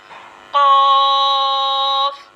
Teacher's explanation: इसका जो मखरज होगा वो ये होगा कि ज़बान की जड़ और तालु के नरम हिस्से से ये हर्फ कॉफ अदा होता है